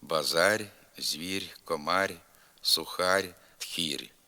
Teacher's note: слобожанським говором властиво пом'якшення приголосного р у кінці слова базар звір Комар сухар тхір така вимова відхиляється від орфоепічних норм